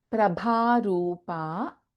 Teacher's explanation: Bha again is Mahaprana and Ru is a Dirghakshara here.